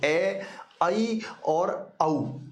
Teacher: अर्ध विवृत में वे ध्वनियां जिनका उच्चारण करते समय मुंह आधा खुलता हो, और आधे खुलने में प्रिय विद्यार्थियों 3 ध्वनियां हैं, ए, आई और औ।